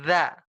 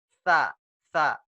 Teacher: Nah, kalau za juga sama seperti sa. Yang membedakan za dengan sa itu kalau za digetarkan. Kalau sa ditiup.